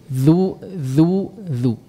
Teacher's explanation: Za, keluarkan lidahnya, ujung lidahnya keluarkan sedikit.